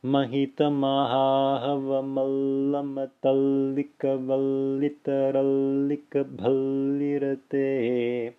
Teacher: So you notice how I'm extending the la, making it long, extending the sound there. And this time, as I extend the first consonant of the conjunction, which is la, you can hear it as I'm extending it. · Because of the nature of the consonant being extended. It's la, which is a semivowel, which is heard as it's being extended. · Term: double la